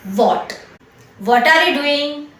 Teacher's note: Modern ઇંગ્લિશમાં સામાન્ય રીતે પ્રોનન્સિએશન વોટ થાય, અલગથી હ સાઉન્ડ ન થાય. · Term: silent